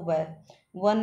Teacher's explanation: य दांत और होठों का दोनों का यूज होता है वो व वन में दांत और होठ दोनों कांपने लग जाते हैं